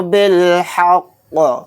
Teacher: تو یہاں پر دیکھیے اگر ہم آیت کریں گے، سانس توڑیں گے تو قاف کو ساکن بنا کر پڑھیں گے، اور یہاں پر قاف ساکن ہوگا تو اس کے اندر قلقلہ بھی ہوگا